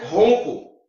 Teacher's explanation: O N não tem som, ele nasaliza o O. Então, ON, de ronco, é dígrafo.